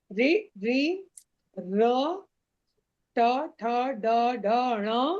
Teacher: तालु से ऊपर। जीभ में ऊपर में एक चिकना सा स्थान है आपके मुख में। ऊपर साइड जीभ आपकी वहां टच करती है इसलिए उसको मूर्धन्य वर्ण कहते हैं।